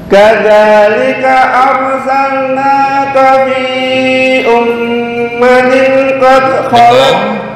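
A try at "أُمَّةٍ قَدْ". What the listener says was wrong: Tanwin bertemu dengan qaf, ikhfa, ditahan, jangan buru-buru.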